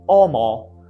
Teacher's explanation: word initial H was not pronounced in Latin